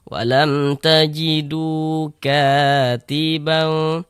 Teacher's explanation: Kalau ada huruf waw, ada tanda sukun, sebelumnya ada harokat dhammah, maka huruf yang memiliki harokat dhammah itu dibaca panjang. Sehingga du dibaca panjang. Mad tabi'i panjang 2 harokat.